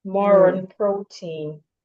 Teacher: You can link the more and on because more ends in r.